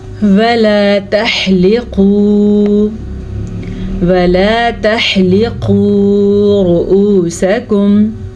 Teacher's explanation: قاف کو آپ پر پڑھیں گے کیونکہ قاف حروف مستعلیہ میں سے ہے، را کو بھی پر پڑھیں گے را کے اوپر پیش کی وجہ سے۔